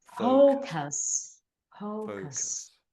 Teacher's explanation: say the faux bit slightly louder than the cuss.